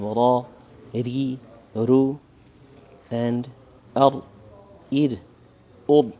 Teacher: The r is more the tongue flipping towards the top of the palate middle, and the ra is the tongue more towards the teeth or right behind the teeth.